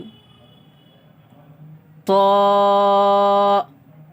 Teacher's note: طا کی آواز تا کے مقابلے میں موٹی ہوگی، تا کی آواز پتلی ہوگی اور طا کی آواز موٹی ہوگی